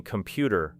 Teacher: the strongest beat falls on the second syllable, creating computer, while the first and final parts become lighter